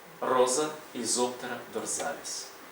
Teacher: між голосними с вимовляється як з